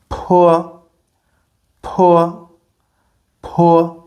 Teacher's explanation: you can hear that it is stronger and you can feel a strong force of air coming from your mouth. So let's test it po p the air is so strong that it is actually bouncing back in my face.